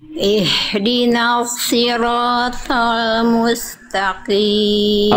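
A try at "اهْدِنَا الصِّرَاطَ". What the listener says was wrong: udah bagus, udah tebal cuman kurang tebal. Coba ikuti saya. Kita fokus ke huruf shad.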